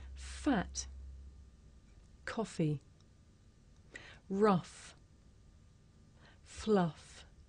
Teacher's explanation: this is a voiceless consonant you can hear it at the beginning of the word fat in the middle of the word coffee at the end of the word rough and at the beginning and end of the word fluff now